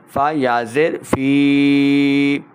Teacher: فَهُوَ فِي عِيشَةٍ رَاضِيَةٍ فِي جَنَّةٍ عَالِيَةٍ فِي فا یا زیر فی، یا ساکن سے پہلے زیر ہے تو یا مدہ، یا مدہ کو ہم 2 حرکات لمبا کرتے ہیں